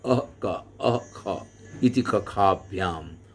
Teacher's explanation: जिह्वा जहाँ से जीभ शुरू होती है उसके मूल से इसका उच्चारण होगा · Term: जिह्वा मूलीय